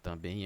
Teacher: Sílaba mais forte, a última, né? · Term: Oxítona